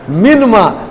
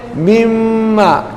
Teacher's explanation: منما. نون کو میم کیا، میم کو میم میں ادغام کر دیا